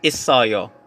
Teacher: It-oyo, yung spelling, but it's pronounced as isoyo. Take note, yung final consonant mo, nadadala siya dun sa initial consonant. So yung iyong or yung no sound, nawawala, napapalitan siya ng final consonant. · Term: linking or liaison